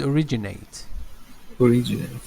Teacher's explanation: The stress is on originate, the second syllable